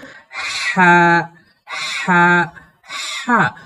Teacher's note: এই লম্বা হাকে এই কণ্ঠনালীর মধ্য থেকে বাতাস সহ সহ করে পড়তে হয়, যেমন হা হা হা। অর্থাৎ এই লম্বা হা কণ্ঠনালীর মধ্য থেকে উচ্চারণের সময় মুখ থেকে বাতাস বের হবে